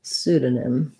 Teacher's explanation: this o is going to be a schwa because it's unstressed and then my last syllable is going to have some secondary stress with that m sound